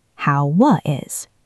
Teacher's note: we link the w in how to the I in is.